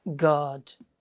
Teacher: first your voice Rises then Falls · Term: exclamation